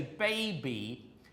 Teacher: But just very for those who are interested if you don't know this in English in the word say baby the B is halfvoiced. >> The voicing starts halfway.